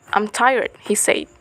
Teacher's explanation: the falling tone on the tonic syllables keep trailing off into the reporting clause he said